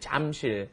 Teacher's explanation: the pronunciation, of course, is right in between that J and that CH